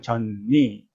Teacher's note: 젖니, 니가 비음이기 때문에 젖이 전으로 바뀝니다. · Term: 비음화